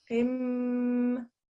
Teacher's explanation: this is a qim, qaf, and a meme joint. There's no noon sound.